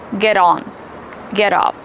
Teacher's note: The letter T is between two vowels. We pronounce it as a fast D.